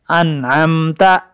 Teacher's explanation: نون کے بعد چونکہ عین ہے، عین کا اظہار حلق کے درمیان سے ہوتا ہے